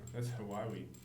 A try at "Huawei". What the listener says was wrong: I don't, it's not two syllables. It's Huawei. Huawei.